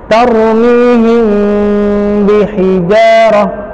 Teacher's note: Jadi ketika him disamarkan, didorong suaranya ke rongga hidung. Dan huruf nun dan mim memang huruf yang dia sifatnya rongga hidung. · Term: ikhfa syafawi